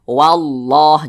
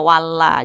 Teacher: Berarti lafaz Allahnya dibaca tebal, maka dibaca wallah, jangan dibaca walla, jangan, tapi ditebalkan wallah begitu.